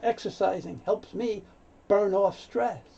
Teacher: The N moves over, so you hear burn off.